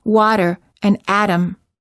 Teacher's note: The T can be pronounced in several different ways, depending on its position in a word and depending on the other sounds that surround it. Sometimes the T sounds more like a D, as in water and atom